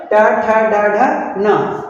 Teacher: उच्चारण स्थान मूर्धा से होता है। इसलिए इन्हें मूर्धन्य वर्ण कहते हैं।